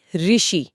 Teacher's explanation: क्योंकि इसमें र व्यंजन की ध्वनि मिल गई है। इसलिए वो इसे शुद्ध स्वर नहीं मानते।